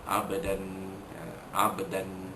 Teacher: huruf ba mati di tengah kalimah, hukumnya qalqalah surah, dilantunkan bunyi ba mati itu dengan lantunan yang kecil sahaja. Abdan, abdan, ada lantunan tapi tidak kuat.